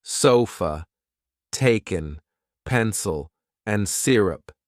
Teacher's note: the schwa is a neutral vowel sound found in many unstressed syllables like the a in sofa or the e in Taken